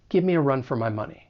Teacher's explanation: if the object pronoun is me, we have give me, we can reduce that to gimme